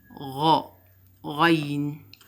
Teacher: غين. We raise the deepest part of tongue in pronouncing غين